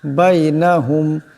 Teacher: মিম সাকিন কিন্তু গুণা করা যাবে না